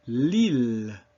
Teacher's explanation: But In French and the other Romance languages, which simply means Latin-based, you'll find a very soft L with the very tip of your tongue, L, against your hard palate, against the top of your mouth.